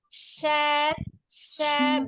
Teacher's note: Ujung lidahnya menyentuh langit-langit atas di depannya, mendekati gusi atas ya. Sya, gitu kan.